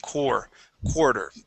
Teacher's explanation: instead of pronouncing that a r it's more of an o r sound